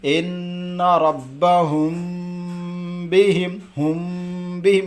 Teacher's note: اب ہم یہاں پڑھے نا اخفاء شفوی، میم ساکن کے بعد با آئے تو غنہ کے ساتھ اخفا ہوگا، تو اس کو اخفا بھی پڑھنا ہے اور غنہ بھی کرنا ہے۔